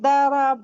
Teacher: وہ ضاد کو کیا کہتے ہیں؟ دال بنا دیتے ہیں، دربا کہتے ہیں. تو دربا کا معنی دوسرا ہوتا ہے اور ضربا کا معنی مارنا ہوتا ہے نا، تو وہ ایک دم بدل جاتا ہے.